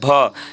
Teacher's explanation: जब दोनों होस्ट सट रहे हैं, दोनों ओठों के सटने से ये भ निकल रहा है